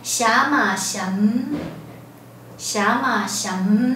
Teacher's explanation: 二声不变，好，声音变长变弱，带一个双唇紧闭的韵尾